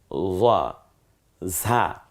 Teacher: ঝিঝি আওয়াজে বাতাসটা বেরিয়ে আসবে জিহ্বাটা খানিকটা পাতলা হয়ে যায় ভেতরে